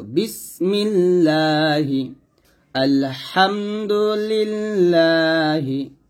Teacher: আল্লাহ শব্দের মধ্য লামের ডানে জের হইলে তখন পাতলা করে পড়তে হয়। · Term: বারিক